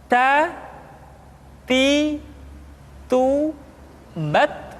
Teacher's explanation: Ta. Kemudian huruf Ta ketika diucapkan terdengar ada nafas yang mengalir, atau dalam ilmu tajwid disebut dengan sifat al-hamas.